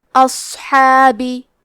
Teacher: صاد کو بھاری آواز میں پڑھنا ہے، اور کیونکہ یہاں صاد ساکن ہے تو ہم صاد کو ہمزے سے بھی پڑھیں گے. حا کی ادائیگی حلق کے درمیان والے حصے سے ہے